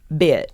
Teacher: it's drawing out that vowel section of the word a little longer, adding a little flavor. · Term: southern draw